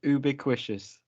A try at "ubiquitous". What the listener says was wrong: Ubiquitous spoon. Ubiquitous.